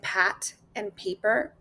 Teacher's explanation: So, for the first one, we have our lips bilabial. Those are the sounds made with both lips touching